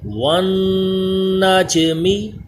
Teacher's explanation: ساکن کلکلا یعنی آواز لوٹ کر آ رہی ہے